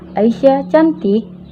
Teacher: ketika kita membacanya dengan nada rendah ke tinggi, maka bermakna negatif